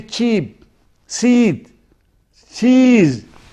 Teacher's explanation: When I say cheap, seed, cheese, I have got spread lips, unrounded.